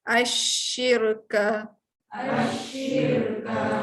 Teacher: Jaga-jaga Shin dengan sin. Huruf shin dia banyak angin.